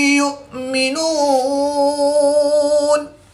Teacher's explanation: حمزہ ساکن ہے تو اس کو جھٹکا دے کر پڑھیں گے